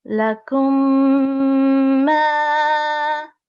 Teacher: whenever a Mim Sakin is followed by a Mim Mushaddad letter, then we have to do complete assimilation for 2 seconds